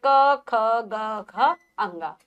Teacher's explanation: क ख ग घ अंग का उच्चारण स्थान कंठ है। बोल के देखिए आवाज कंठ से आपको निकलेगी। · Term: क वर्ग